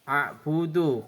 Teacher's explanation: qalqalah kubra karena ada huruf dal mati di akhir kalimat, cara bacanya membalik membentuk huruf dal.